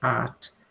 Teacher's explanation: O heart, quando a gente pronuncia sem o H, fica art. E vejam que também funciona se o sotaque pronuncia ou não o R.